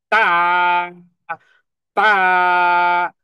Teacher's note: তৃতীয় হরফ তা, তা, এই যে একটা ধাক্কা, এই যেটা উচ্চারণে কঠিন, কারণ আমার জিহ্বাকে আমি দাঁতের গোড়ার সাথে লাগিয়ে শ্বাস কিছু সময় বন্ধ রেখে দেন পাওয়ার অর্জন করে